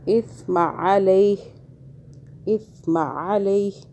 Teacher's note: سا کو سافٹ پڑھیں، زبان کو ہلکا سا باہر کریں، پھر ادا ہوگا۔